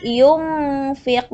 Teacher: sukun atau tanwin bertemu dari salah satu ini maka dibacanya samar-samar jadi Nun matinya Nun sukunnya atau tanwinnya tidak dibaca dengan jelas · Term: ikhfa